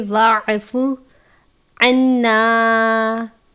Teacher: وَاعْفُو، عین ہے، عین کو ہمیشہ باریک پڑھتے ہیں، الف کی طرح سادہ نہیں پڑھنا، یعنی وافو نہیں پڑھنا بلکہ باریک کر کے پڑھیں گے.